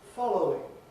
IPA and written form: ˈfɒləʊɪŋ (following)